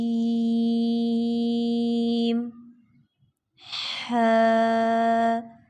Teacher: हा को हलक से निकालेंगे